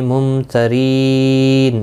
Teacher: میم ساکن کے بعد تا آیا، اظہار شفوی ہوگا، گنہ نہیں کریں گے